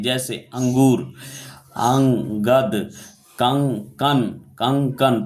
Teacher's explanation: जिसका उच्चारण केवल नाक से निकलता है उसे अनुस्वर कहते हैं